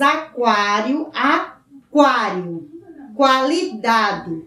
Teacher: Quando nós pronunciamos aquário, aquário, qualidade. O U é pronunciado.